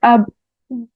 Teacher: تو اب میں آپ کو بتاتی ہوں، حمزہ با زبر اب، دیکھیں با حروف قلقلہ میں سے ہے، ہم نے اس کو جھٹکا دینا ہے